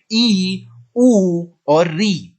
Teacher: जब भी हम बड़ी ई ऊ और री को बोलते हैं तो हमारा मुख सबसे कम खुलता है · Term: संवृत स्वर